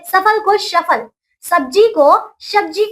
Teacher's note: पहाड़ी क्षेत्र में रहने वाले लोग प्रायः स को श की तरह उच्चारित करते हैं।